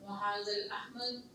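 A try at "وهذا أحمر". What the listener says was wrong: ال نہیں ہے لیکن چلے ہاں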